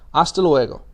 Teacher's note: you notice that the H did not make a sound there. In Spanish, unless I tell you otherwise, H is always quiet. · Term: silent